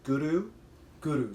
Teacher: So you're rolling that R a little bit.